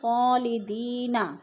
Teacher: یا مدہ کو ہم نے ایک الف دو حرکات کے برابر لمبا کر کے پڑھنا ہے